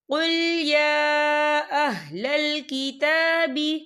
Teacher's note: غنی عن العالمین قل یا اہل الکتاب، یا دیکھیں کل، یا کے پر کھڑی حرکات ہے اور اس پہ چھوٹی سی مد بھی ہے، تو ہم اسے 4 حرکت کے برابر کھینچ کے پڑھیں گے